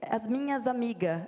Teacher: a gente não vai pronunciar o S final de amiga